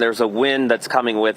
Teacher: I would say it's a stop D in this case not a canceled D